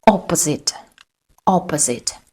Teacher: We have 3 syllables and the first syllable is stressed.